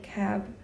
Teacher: You could even say cab and not open your lips for a considerable period of time if it were the last word of an utterance.